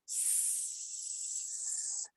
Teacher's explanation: With that hissing S sound, we can make it long. We can make it short. And maybe we can make it loud and soft, but we can't change pitch.